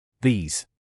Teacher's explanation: E тягнемо як подовжену літеру і S вимовляємо як звук з